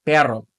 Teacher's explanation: flutter that one time or twice for that single R or doble R